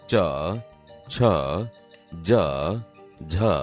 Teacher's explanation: અહીંયા બોલતા તમે જોશો કે આપણી જીભ તાળવાને અડે છે, તેથી તે તાલવ્ય વ્યંજન છે.